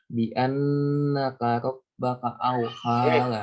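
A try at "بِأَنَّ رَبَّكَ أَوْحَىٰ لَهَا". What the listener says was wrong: nyontoin bi annaka, tapi bi anna rabbaka awha laha. Antara huruf H sama huruf H itu lain. Karena memang hurufnya udah lain.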